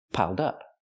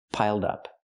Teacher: Connect the d with the next word, dup, piled up.